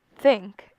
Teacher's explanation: you will not feel any vibration when producing the th part of the word. That is because it would be transcribed using a theta, which means that it is produced without the vibrating vocal folds as the source.